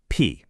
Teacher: you start with just the pure sound, a little puff of air. The phoneme, P.